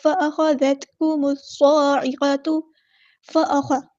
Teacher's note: خواہ کو پورا ادا کرنا ہے، ہیوی لیٹر ہے